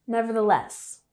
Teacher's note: we have the emphasis on the last syllable